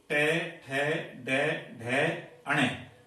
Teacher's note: ये जो वर्ण है इनका उच्चारण स्थान मूर्धा है